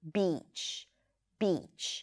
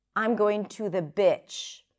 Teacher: But if you don't raise your tongue and prolong the sound a little bit, when you say that you're going to the beach, it might sound that you're saying, I'm going to the bitch, which is probably not what you're trying to say. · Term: tense E sound